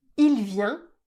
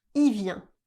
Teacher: » Et on va s'intéresser maintenant au pronom « il » qui est lui aussi très souvent contracté à l'oral. Devant une consonne, on va rarement prononcer le son « L » du mot « il », on va simplement prononcer « i ».